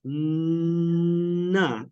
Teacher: With na, your tongue is touching your alveolar ridge and it's closing it off. Na, and the sound is coming out your nose. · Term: nasal sound